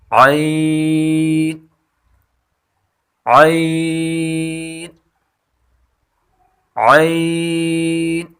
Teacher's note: عین کی مخرج وسط حلق یعنی گلے کا بیچ والا حصہ